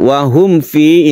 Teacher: ada mim mati bertemu dengan waw, kita sebut dengan idhar syafawi, tidak berdengung